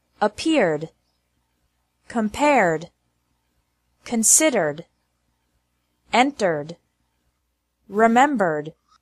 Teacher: Ed is pronounced like D with no extra syllable after verbs ending with an R sound.